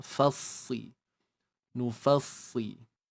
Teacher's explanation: huruf fa dan huruf sad yang mana kita kena tebalkan dia